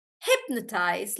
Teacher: in hypnotize it's actually on hip